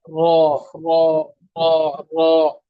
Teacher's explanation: तरफे लिसान मा पुश्ते लिसान जब सनाया रुबाई के मसूड़ों से लगे तो वहां से रॉ अदा होती है